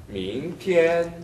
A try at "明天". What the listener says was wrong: 티엔. 하고 맨 끝에 혀가 어디에 가 있죠? 아까 느 하는 위치에 가 있어야 됩니다. 그런데 밍티엔 혀가 보였어요. 이건 정확한 엔 위치가 아니죠. 네, 원래의 위치에 혀를 두십시오. 밍티엔.